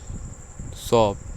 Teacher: हवा मुख से रगड़ जाती है रगड़ खाती हुई धीरे-धीरे बाहर निकलती है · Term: उष्म संघर्षी व्यंजन